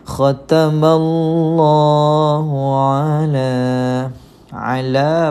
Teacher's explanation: Ala tuan-puan, kita jumpa di sini alif kecil, tidak berbaris. Kita jumpa dengan mad asli, baca panjang 2 harokat.